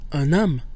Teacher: loses its nasal quality when followed by a vowel or as in this case a mute H so we get an 'm where we pronounce the N instead